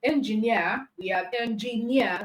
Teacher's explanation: we have engineer that means it has three syllable words and the last syllable is near which means that near is the stressed syllable